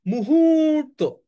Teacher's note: মুহূর্ত তো তাহলে আমি আবার যদি উচ্চারণ করি মুহূর্ত তার মানে মু এক আলিফ তাহলে রসকার কারণ ছোট টান দিয়েছি এরপর হ এর নিচে বড় টান দিয়েছি তাহলে হ এর নিচে দীর্ঘকার মু এর নিচে রসকার হ এর নিচে দীর্ঘকার বুঝ মু এক আলিফ আর হু তিন আলিফ